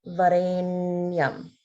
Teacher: make sure there's holding on the na sound.